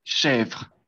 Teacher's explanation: Oui, une E ouverte, una E abierta